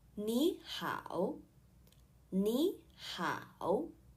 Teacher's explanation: we will change the first third tone to second tone